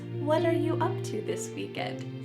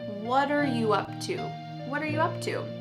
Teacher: the word what and are are creating a spoken contraction